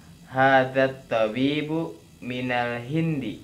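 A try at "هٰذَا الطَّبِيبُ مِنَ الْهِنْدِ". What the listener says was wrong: Nah, ahsanta.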